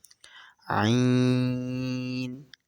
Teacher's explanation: عین ح حلق کے درمیان والے حصے سے ادا ہوتے ہیں